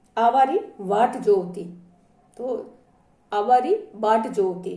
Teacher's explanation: ब री जगह अठे व रो घणो प्रयोग वे